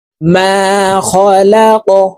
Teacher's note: কফ কলকলার হরফ, উপরের দিকে ধাবিত করে ধাক্কা দিয়ে উচ্চারণ করে এই কফকে সাকিন করে ফেলব।